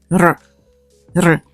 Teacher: It's a tapped version of the R, like in Spanish pero